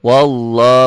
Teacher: lafaz Allahnya dibaca tebal karena sebelum lafaz Allah baris atas